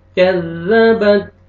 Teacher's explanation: کاف کو باریک پڑھیں گے، زال کو نرمی سے ادا کریں گے